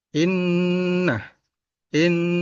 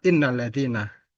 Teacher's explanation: ada Nun bertasdid ini ciri dari gunna musyadadah jadi bacaannya ditahan dua atau harakat